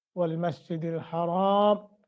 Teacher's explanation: را کو لمبا کریں گے چونکہ آگے الف ہے